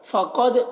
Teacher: क़ाफ को पुर पढ़ना है और दाल में कलकला हो रहा है।